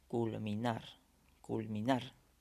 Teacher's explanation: la mayor fuerza de voz está al final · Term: sílaba tónica